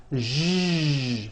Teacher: To produce this sound, first make a sh sound, and then you add voicing. Sh, zh, like that. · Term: voiced SH sound